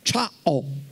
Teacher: sono due sillabe o una secondo come le pronunciamo, è molto sonora, c'è la palatale c e due vocali, a o, cia o.